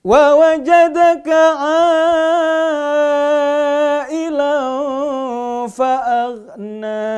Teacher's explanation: A-nya itu panjangnya 5 harokat. 5 kali ketukan. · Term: mad wajib muttasil